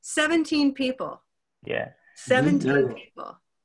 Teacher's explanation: have two main stresses next to each other so it's because people is stressed on the first syllable